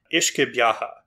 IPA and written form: 'ɪʃkə 'bjɑhɑ (uisce beatha)